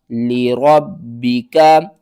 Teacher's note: با کو 2 بار پڑھیں اور سختی کے ساتھ